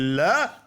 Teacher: इन वर्णों के उच्चारण में श्वास वायु जीभ के बगल से यानी साइड से पार्श्व से होकर के गुजर जाती है इसलिए इन्हें हम पार्श्विक व्यंजन कहते हैं और ल ध्वनि पार्श्विक